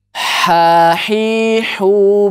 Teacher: salah satu sifatnya itu adalah rokhowah dia mengalir dan tidak dibaca putus